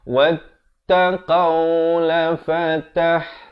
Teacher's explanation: Wattaqau, ta itu bersabdu jadi tekankan.